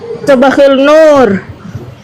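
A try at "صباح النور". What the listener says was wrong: khair, kalau sobahul khair ini alif lamnya dibaca. nur karena ini syamsiah, alif lam sobahun nur. Jadi bukan sobahul nur, no, khata. Sobahun nur gitu.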